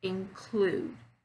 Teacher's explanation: I'm stressing on the second syllable